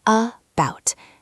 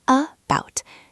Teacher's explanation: say it naturally, where the first vowel becomes schwa